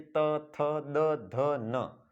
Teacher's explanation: पूरी की पूरी ध्वनियां जो है वो जीवा के दांत से टच होने के कारण उत्पन्न होती है। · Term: दंतीय